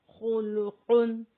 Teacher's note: خا کو بھی موٹا پڑھیں گے اور قاف کو بھی موٹا پڑھیں گے